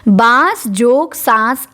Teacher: तो चंद्रबिंदु जो होता है ये आपका यही अनुनासिक है। तो ये नासिक की ध्वनियाँ हैं जो स्वर के साथ जोड़ के बोली जाती हैं